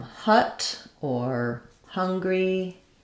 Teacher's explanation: another typical pronunciation for those letters hu is just the h and the schwah sound that sounds like uh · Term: schwa sound